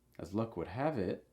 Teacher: Notice that it will have a rising intonation.